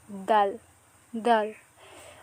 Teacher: দালটার মাখরাজ হবে জিহ্বার আগার সামনের উপরের দুই দাঁতের গোড়ার সাথে লাগিয়ে।